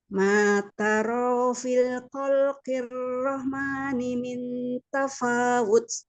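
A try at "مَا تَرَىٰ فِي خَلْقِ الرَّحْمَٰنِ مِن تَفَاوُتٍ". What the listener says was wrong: Nah, itu tarofi bukan fil. Maknya ada mat rohmani min.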